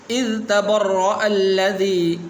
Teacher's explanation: اذ یہاں پر یہ ذال ہے، زا نہیں پڑھنا۔